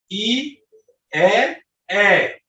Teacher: যেমন ই, ই বললে টুটের স্বাভাবিক ছিল না, দুই টুট প্রসারিত হয়েছে, এই জন্য এটাকে বলা হয় প্রসারণ অবস্থান, এটাকে বলবো আমরা প্রসৃত বর্ণ।